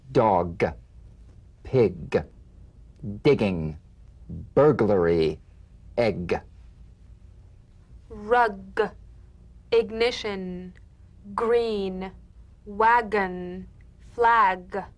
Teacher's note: the mouth without tightening pressing or pushing g g you'll feel a crisp tap and a voiced pulsation of the back of the tongue